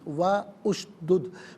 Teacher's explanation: واو پر زبر ہے، اسے اشدد کی شین کے ساتھ ملائیں گے، درمیان سے الف حمزہ کو حذف کیا جائے گا، وشدد پڑھیں گے۔